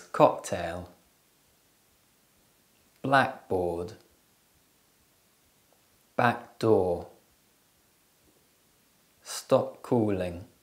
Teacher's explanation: and releasing air in the mouth english has six stop sounds when two stop sounds come together they overlap which means the first sound isn't released and it blends with the second sound